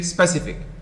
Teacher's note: But most of you say specific, misplacing the stress on the first syllable.